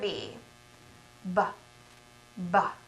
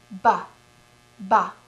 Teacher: did you see my lips pop open check and see if you can feel that burst of air coming out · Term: lip popper